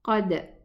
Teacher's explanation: Same as we pronounce the dal. It's a sukoon dal, and I'm going to pronounce the dal with qalqala.